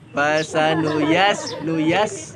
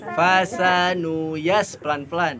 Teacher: huruf sin itu keluar dari ujung lidah dengan ujung dua gigi seri bawah